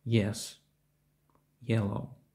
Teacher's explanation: цей звук вимовляється трохи не кінця та м'якше ніж в українській мові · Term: звук й